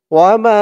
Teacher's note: মা এখানে তিন আলিফ টান মধ্যে মুনফাসিল